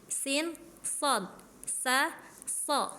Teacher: Memang sin shad itu makhrajnya sama. Ujung lidah nempel ke gigi seri yang bawah.